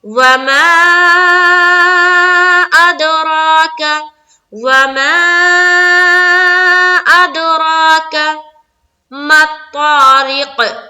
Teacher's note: اب یہاں پر قلقلہ بھی کر لیا، یہاں پر مد بھی کر لیا، را کو پر بھی کیا اور ایک الف کے باقدر کھینچا کیونکہ کھڑا زبر ہے